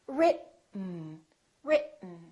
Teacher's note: keep your tongue up don't release it let the air just come out through your nose for the n sound listen RIT mmm RIT let's try another word same thing T